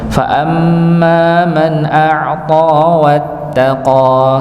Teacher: huruf ta ini termasuk huruf yang dibaca tebal, maka jangan sampai dibaca seperti ta, a'ta wattaqah, enggak mungkin ya.